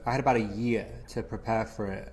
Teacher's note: The letter D in the word had sounds like a flap T and is connected to the vowel A in about, which has a schwa sound, So we hear had about.